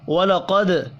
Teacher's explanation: دال ساکن پر قلقلہ کرنا ہے۔ جاءکم بڑی مد کو 5 الف کے برابر کھینچ کر پڑھیں گے، میم مشدد پر غنہ کریں گے۔ · وَلَقَدْ قاف حروف مستعلیہ ہے، پر پڑھیں گے، دال ساکن پر قلقلہ کرنا ہے۔